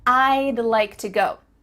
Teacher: we're cutting off all the sounds in the word would except for that final D